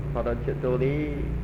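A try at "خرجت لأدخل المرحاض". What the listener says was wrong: Li-nya jangan panjang, langsung. Kharajtu li adkhulal Jadi li di situ disambung ya penulisannya dengan huruf fi'il mudhari'nya. Li asroba, li adkhulal.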